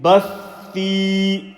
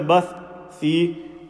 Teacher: Remember the tha sound, you don't break the sound. The shadda has to be evident. Bathi. If you say bath and then thi, that's incorrect.